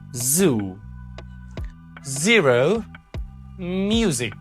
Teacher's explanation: z is called a voiced alveolar fricative